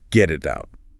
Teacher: Really feel your tongue just lightly tapping the roof of your mouth. Keep the air flowing constantly. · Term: co-articulation